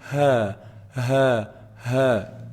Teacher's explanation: the air that just comes out from the bottom of the throat